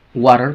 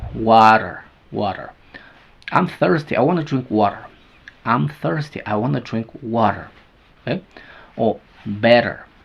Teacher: está en medio de vocales suena flap